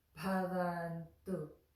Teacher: We put the tongue behind the front teeth for the tu